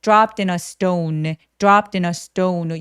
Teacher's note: dropped in a stone, dropped in a 하면서 너처럼 또 연결해 주시고요. stone 할 때 S 뒤에 T들은 살짝 된 소리를 냅니다. dropped in a stone, dropped in a stone 여유롭게 모음 소리 내주시고요.